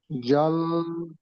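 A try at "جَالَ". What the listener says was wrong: দেখেন, আপনি এখানে, আমি মানা করেছিলাম যে জিমকে কেমন জিম পড়বেন না, আপনি এখানে জাল পড়ছেন, কিন্তু এখানে জাল বললে ভুল হবে। জাল, জাল বললে ভুল হবে, কেন হবে? দেখেন, টানটা কেমন হবে দেখেন। বাংলা লেখা আছে দেখেন এখানে, দয়াকার ল আছে দেখেন, দয়াকার লর মাঝখানে দেখেন একটা ছোট্ট মতো একটা গাঁড়ি দেওয়া আছে, তাই না? মানে টানটা ওই জায়গাটাই হবে, টানটা ওই জায়গাটাই হবে।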